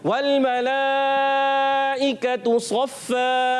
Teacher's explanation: वाव की अदायगी होठों की गोलाई से होगी और लाम को हिलाना नहीं है।